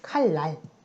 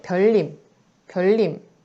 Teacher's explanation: 니은이 리을과 근접해서 쓸 때 비슷하게 리을과 닮아가고 싶어서 리을처럼 발음되는 경우를 말해요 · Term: 유음화